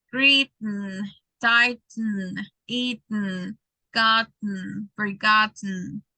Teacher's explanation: we have a glottal stop because if you feel, you stop in letter T